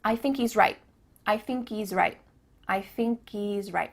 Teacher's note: at the end of the word right, there's no T sound.